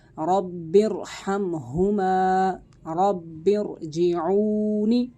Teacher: را ساکن سے پہلے زیر دوسرے کلمے میں ہو تب بھی را کو موٹا کر کے پڑھا جائے گا